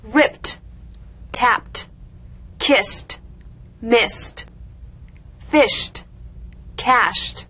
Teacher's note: ed endings that are really pronounced as T